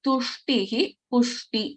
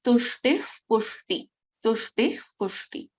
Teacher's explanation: we don't pronounce the complete visarga. We will pronounce this as tushtif pushti. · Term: half visarga